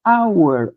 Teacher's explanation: hour começa com H, sim, mas qual é o primeiro som que nós temos aqui? O sonzinho do O aberto